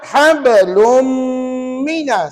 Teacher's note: Maknanya, ya, hidung kita tadi ada bunyi sengau. Itulah yang dinamakan sebagai ghunnah. 2 harakat. Setiap dengung mesti 2 harakat.